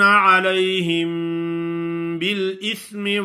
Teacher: میم ساکن کے بعد با آ جائے تو یہاں غنہ ہوتا ہے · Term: اخفاء شفوی